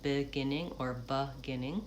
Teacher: The first syllable is more of a schwa or an I, beginning or beginning.